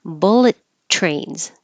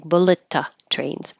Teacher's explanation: Now, bullet is like an adjective, so that's more likely to be emphasized. And the first T, bullet, you just hold it, bullet. Don't release the airflow until the tr in trains.